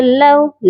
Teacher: لام کے ساتھ واو لین ہے، اس کو نرمی سے پڑھا جائے گا